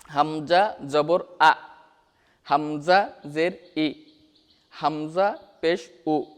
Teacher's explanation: হামজার মাখরাজটা হচ্ছে হামজা হলকের শুরু হতে শক্তভাবে আদায় হবে।